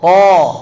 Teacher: Huruf ta itu termasuk huruf yang harus tebalnya sangat kuat. Apalagi datang di posisi fathah, setelahnya ada mad bil alif, itu tingkat yang paling tinggi tebalnya.